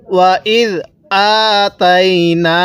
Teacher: এই হামজায়ের মধ্যে 1 আলিফ টান দিব, তায়ের মধ্যে টান দিব না, আবার এই নুনের মধ্যে 1 আলিফ টান দিব, জবরের পরে খালি আলিফ, তাহলে ওয়া ইদ আতাইনা।